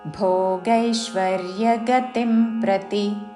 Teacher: చివరిలో తీ హ్రస్వము పొడిగించకూడదు.